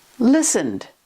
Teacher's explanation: Ends in d because n is voiced.